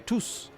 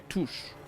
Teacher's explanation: instead of being like a tous it's like a touch and you make a sh sound